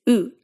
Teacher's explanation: The tongue position here is basically the same as english's oo vow your tongue is high up and back in your mouth